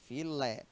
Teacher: como a gente tem duas sílabas a sílaba forte é a última nós temos uma oxítona · Filé é um dissílabo, cuja última sílaba forte é o lé